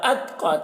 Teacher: قاف کو موٹا کر کے پڑھ رہے ہیں اور اتقا تا میں قلقلہ نہ ہونے پائے اس کا خیال رکھنا ہے کہ تا میں قلقلہ نہ ہونے پائے.